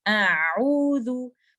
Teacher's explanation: आइन आ रहा है एपिग्लॉटिस और back wall of द throat से